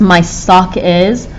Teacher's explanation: Of those three words, sock seems stressed. It's one that we have to say longer, wider, louder.